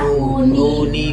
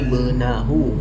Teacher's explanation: Nunnya dikasrohkan, jadi bunyinya bukan nun sukun lagi, tapi jadi ni.